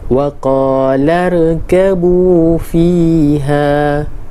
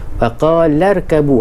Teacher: Maknanya ada perkataan sebelumnya dan kita boleh lebih mudah faham hamzah wasal ni berada di tengah-tengah ayat. Okey, dan bila dia ada tengah ayat, hamzah wasal ini tidak dilafazkan